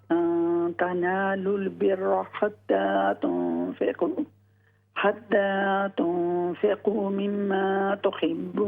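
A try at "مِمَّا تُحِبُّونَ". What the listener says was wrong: मिम्मा गुन्ना करें।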